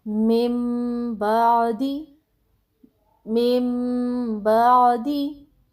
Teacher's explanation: اگر نون ساکن یا تنوین کے بعد حرف با آ جائے تو نون کی آواز کو میم کی آواز سے بدل کر پڑھیں گے